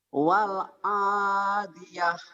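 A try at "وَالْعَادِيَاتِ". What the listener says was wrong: Ya panjang ya. Jadi mad ari disukun tuh. Karena ada mad asli ketemu satu huruf hidup dihentikan.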